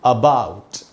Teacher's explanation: SCHWA श्व sound बोलते हैं इसको। इसका मतलब होता है आधा अ। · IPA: /əˈbaʊt/